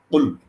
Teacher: এটা আমার কুল মাখরাজটা আমার গলার মাঝখান থেকে বেরোচ্ছে